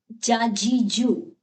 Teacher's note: یہ حروف شجریہ تھے یعنی داڑوں سے ادا ہونے والے حروف